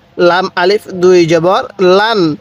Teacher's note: স্মরণ রাখবেন আমি কিন্তু এই তানবিনের মধ্যে কোনো টান দিতেছি না।